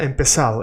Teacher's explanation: in Latin America the Z is pronounced like an S